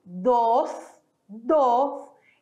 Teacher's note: Esse S vai ser ali com a sua língua encostando nos dentes.